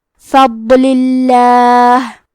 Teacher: لام کے نیچے زیر ہے، لہذا لفظ الجلالہ کے لام کا حکم ہے ترقیق، تو ہم حرف اللام کو پتلی آواز میں پڑھیں گے